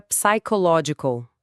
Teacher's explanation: Mas em psychological, o P inicial é totalmente mudo. Você vai direto para o som do S. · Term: som silencioso